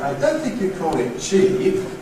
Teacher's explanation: Notice how the Fall-Rise does have the effect of somewhat stretching the vowel of ‘cheap’.